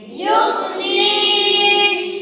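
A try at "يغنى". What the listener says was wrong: تو پھر تو کلکلا بنا رہے ہم، غین پہ نہیں زبر بنا رہے. بلکہ غین کیا ہے؟ ساکن ہے. یا جو ہے غیر مدہ ہے، یا غیر مدہ ہے. غین مستقل حروف مستعلیہ میں سے ہے. غین مستقل حروف مستعلیہ میں سے ہے. اور اللہ بلا کرے نون ساکن کے بعد یا ساکن آ رہا ہے تو وہ مدہ ہے.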